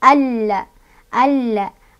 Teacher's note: Dibacanya langsung masukkan di huruf lam sambil ditekan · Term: alif lam syamsiah